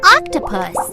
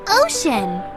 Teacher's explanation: It can make the short ah sound like an octopus. Or it can make the long O sound like an ocean.